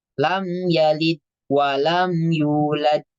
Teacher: 4 lamid sifat Dal memiliki sifat Qalqalah ya memiliki sifat Qalqalah ketika huruf Dal harakatnya sukun jangan ragu untuk mengqolqolahkan atau memantulkan huruf Dal